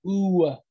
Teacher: you try saying the oo sound you can see that it ends in a w